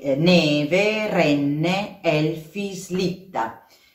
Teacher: tutte queste parole sono parole Piane Quindi con l'accento sulla penultima sillaba